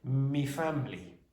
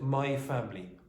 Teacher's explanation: it is very common in Irish English, and it's Irish English, to change my to me. It's very weird, but you will hear me family instead of my family, or myself instead of myself.